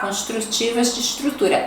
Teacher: o S também é chiado, mas não é tão forte como a gente estava vendo anteriormente